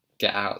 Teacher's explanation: So she's really heavily pronouncing that glottal stop there.